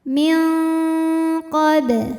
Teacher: samar-samar siap-siap menuju makhraj huruf qaf yaitu pangkal lidah naik ya disertai bunyi dengung karena qaf ini makhrajnya jauh dari Nun maka bunyi dengung yang besar jadi bunyi yang masuk hidung banyak aliran suara dari mulut sedikit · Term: ikhfa, ikhfa ab'ad